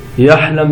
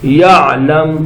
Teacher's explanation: یہاں عین پڑھیں گے، عین حلقے درمیان والے حصے سے ادا ہوگی